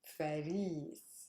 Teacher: The stress is on ris, which is a super heavy syllable.